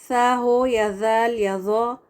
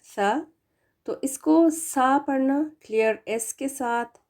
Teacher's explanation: तीनों में जबान की नोक ऊपर के दांतों के किनारों को लगेगी और जबान की नोक थोड़ी सी प्रोत्रूड होनी चाहिए बाहर नजर आएगी बस थोड़ी सी जैसे इस इमेज में नजर